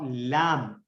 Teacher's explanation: लाम जिस तरह ज़बान के अगले हिस्सा को ऊपर के सामने वाले 6 दांतों और 2 दाढ़ों के मसूड़ों से अच्छी तरह लगाने से अदा होता है लाम।